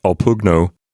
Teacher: The B gets sort of absorbed into the P sound. This is a linguistic thing called assimilation.